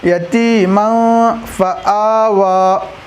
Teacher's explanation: یتیمن میں نون کی آواز کو ناک میں چھپا رہا ہوں میں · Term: اخفا